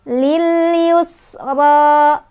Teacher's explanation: Ra dibaca secara tafkhim karena ra-nya berbaris fathah berdiri. Cara bacanya ditebalkan ya. Ra-nya juga punya hukuman tabi'i karena ada fathah berdiri di atas huruf ra.